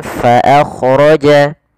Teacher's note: Anfa makhraj daripada fa adalah gigi atas menempel dengan bibir bawah. Maakja. Kemudian fa jangan dibaca dengan pa.